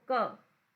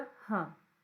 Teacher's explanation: क में गर्म हवा नहीं निकलेगी, पर जैसे ही तुम लोग ह बोलोगे, क ह, तो आपको गर्म हवा निकलती है